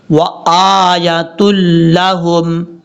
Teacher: حمزہ کے بعد جو یا ہے اس یا کو لمبا نہیں کریں گے، حمزہ کے اوپر کھڑا زبر ہے ، صرف کھڑا زبر کی وجہ سے حمزہ کو لمبا کیا